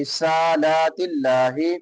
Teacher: سین کے اوپر لام کے اوپر کھڑی زبر ہے، دونوں کو ایک ایک الف کے برابر لمبا کریں گے. رسالات اللہ، لفظ اللہ باریک ہوگا.